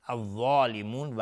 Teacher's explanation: الف لام شمسی و ضاد از حروف استعلاء غلیظ طرف میشه